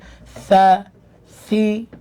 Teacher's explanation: জেরের সময় আমি সি, আমার ঠোঁটটাকে আমি নিচের দিকে নিয়েছি।